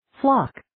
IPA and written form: flɑːk (Flock)